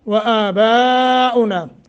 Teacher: مد متصل ہے، 2.5 الف سے لے کر 3 الف کے برابر لمبا کریں